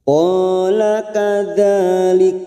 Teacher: Fathah diikuti alif, 2 harokat kita panjangkan.